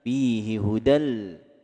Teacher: Ada tanwin bertemu dengan huruf la disebut dengan idgham bila gunnah.